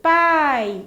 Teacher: quando eu pronuncio pai, o A ele é mais forte do que o I. Então, nesse caso, semivogal quer dizer isso, a pronúncia que você faz sem a interrupção de nenhum elemento da sua boca e aí você faz ela de maneira mais fraca do que a vogal.